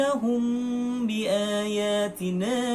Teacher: cara membaca ikhfa syafawi yaitu dengan samar-samar dan dengung